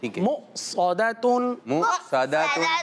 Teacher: हम मुँह सौदातुन नहीं पढ़ रहे बल्कि हमजा साकिना पर झटका देकर पढ़ रहे हैं